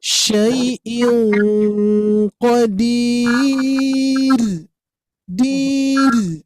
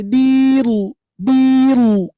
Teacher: ketika disukunkan harokat domahnya itu enggak berpengaruh ya, sehingga tetap dibaca tipis